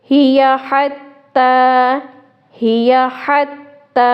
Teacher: ہا کو حلق کے درمیانی حصے سے نکالیں گے. اب دیکھیں یہ دونوں ہا، ہی حتی، ان دونوں کا مخرج علیحدہ علیحدہ ہے، اس لیے ان کی آواز بھی واضح کرنی ہے.